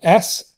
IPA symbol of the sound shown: s